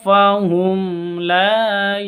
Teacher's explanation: nun mati bertemu dengan tho cara bacanya samar didengungkan siap-siap ke huruf thnya